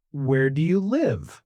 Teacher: The voice goes down on live. Live. It's a little strange, you know, because it's a question, but the music still goes down. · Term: falling intonation